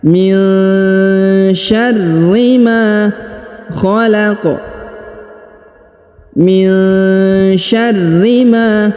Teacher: Nun sukun bertemu sya dibaca dengung dan disamarkan.